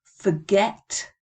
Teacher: where's the stress forget it's on the second syllable isn't it